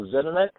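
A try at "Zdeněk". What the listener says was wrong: Actually, it's pronounced Zdenek. The D is silent, but most people sort of stumble over it, so don't worry about it.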